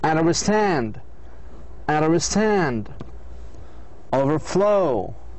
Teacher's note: Then for compound words, you need first to know if it is compound nouns or compound adjective or compound verbs. In the compound verbs, the stress on the second part